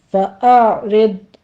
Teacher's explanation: ضاد کو بھی آپ نے پر پڑھنا ہے اور اس کے اوپر سٹاپ کرنا ہے۔ فاعرض، زبان کی کرپٹ اوپر تاڑوں کے ساتھ لگا کے اس کو سٹاپ کر دینا ہے۔